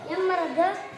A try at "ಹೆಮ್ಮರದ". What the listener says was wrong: ಹೆಮ್ಮರದ. ಹಾ ಸೌಂಡ್ ಬರಬೇಕು. ಹೆಮ್ಮರದ. ಎಮ್ಮರದಲ್ಲ, ಹೇಳಕತ್ತೀನಿ ನೀನು. ಎಮ್ಮೆ ಆಗುತ್ತದೆ. ಎಮ್ಮೆನಾ? ಹಾ, ಎಮ್ಮೆ ಅಲ್ಲ, ಹೆಮ್ಮೆ. ಹಾ ಸ್ವಲ್ಪ ಉಸಿರು ಬಿಡು. ಹೆಮ್ಮೆ.